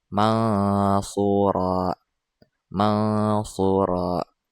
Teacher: Di antara huruf nun dan juga shad didengungkan. · Cara membaca ikhfa hakiki yaitu dengan didengungkan sepanjang 2 harokat atau 1 alif. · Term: ikhfa haqiqi